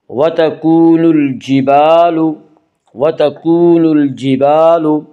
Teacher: جیم یا حروف قمری میں سے ہے، جیم سے پہلے الف اور لام ہے، اس سے صرف لام کو پڑھا جائے گا، الف کو نہ پڑھیں گے